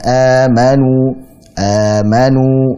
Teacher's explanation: Hamzah dulu baru Mad kemudian kita memanjangkannya dua harokat ini pada riwayat hafs a'n assem kita panjang dan dua harakat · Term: mad badal